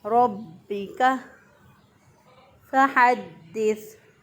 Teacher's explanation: با کے اوپر جو ہے دیکھیں شد ہے تو اس کو مضبوطی اور قوت سے پڑھیں گے